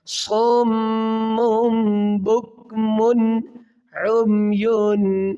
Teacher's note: من پہ غنہ نہیں کریں گے کیونکہ 2 پیش کی تنوین کے بعد حروف حلقی میں عین ہے